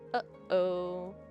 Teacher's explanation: with that little pause in the middle